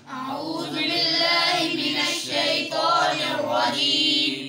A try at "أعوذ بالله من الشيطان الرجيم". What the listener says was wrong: آپ کے بھائی اعوذ پہ سیٹی آتی ہے زال میں. أعوذ بالله من الشيطان الرجيم.